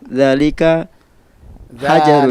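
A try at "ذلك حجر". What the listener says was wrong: Dzalika, panjangkan dzalnya.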